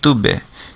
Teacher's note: তাহলে বায়ের ক্ষেত্রে হচ্ছে সাউন্ডটা কলকলা হবে, অর্থাৎ সে আওয়াজটা আবার ফিরে আসবে। যেমন বলকে যদি আপনি মাটিতে ছুঁড়ে মারেন সেটা আবার ফিরে আসে, ঠিক তেমনিভাবে সাউন্ডটাও ফিরে আসবে তুবে।